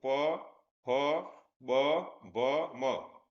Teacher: ઓષ્ઠ એટલે જે વ્યંજન આપણે બોલીએ જે હોઠથી બોલાય હોઠની મદદ વગર બોલાય નહીં તો આ ચારમાંથી કયો વ્યંજન છે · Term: ઓષ્ઠ વ્યંજન